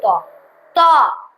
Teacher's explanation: त थ द का पांचू अक्षर और उसका उच्चारण दंत है मतलब दांत है